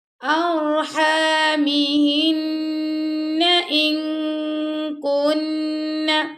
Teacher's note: اب یہاں پہ نون ساکن کے بعد آ گیا کاف، تو یہاں پہ ہم اخفا کریں گے